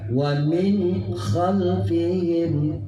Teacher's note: Dia tidak memohon untuk didengungkan dan tidak memohon untuk dipanjangkan, tapi nunnya itu jelas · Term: izhar